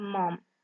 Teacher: that is voice bilabial nasal